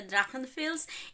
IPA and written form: ˈdʁaxənˌfɛls (Drachenfels)